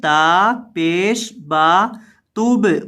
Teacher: با کو ہلائیں گے کیونکہ با حروف کلکلہ میں سے ہے